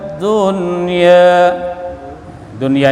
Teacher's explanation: dunya ini tidak boleh didengungkan diizharkan